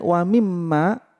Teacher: ada mim bertasjid didengung tiga ketukan namanya ghunnah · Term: gunnah